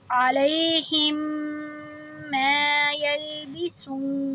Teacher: یعنی ادغام شفوی کریں گے، 2 حرکہ آواز کو لمبی کریں گے، علیہم ما یلبسون، جب وقف کریں گے تو ان پہ جزم لگا دیں گے۔